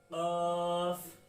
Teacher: عین غین, عین خالی ہوتا ہے, غین کے اوپر ایک نقطہ آ جائے تو غین بن جاتا ہے. فا, یہ بڑا قاف ہے, اس کی آواز حلق سے نکلے گی